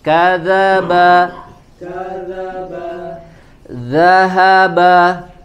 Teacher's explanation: ee membacanya mirip dengan huruf Z bukan kazaba tapi dza ya ujung lidah ditempelkan ke ujung gigi seri bagian atas